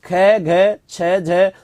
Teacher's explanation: जिसके उच्चारण में वायु बाहर निकलती है अधिक मात्रा में, उन्हें हम क्या कह देते हैं? महाप्राण वर्ण कहते हैं।